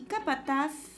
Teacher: capataz lleva la mayor fuerza de voz en la última sílaba, ¿no? Entonces es aguda.